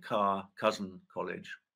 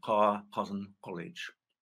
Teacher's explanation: So where I say, and most people say car, cousin, college, MLE speakers say car, cousin, college. This sound is technically known as a uvular plosive. · ‘k’ sound pronounced further back in the mouth